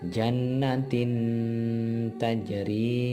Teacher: suara nun sukun atau tanwin masih tetap terdengar tetapi samar antara idhar dan idgham dan terus bersambung dengan makhraj huruf berikutnya sehingga kedengarannya seperti yang 4 ini. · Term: ikhfa